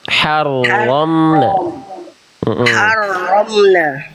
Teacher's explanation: Huruf ro-nya udah bagus, tinggal dijelaskan getarannya.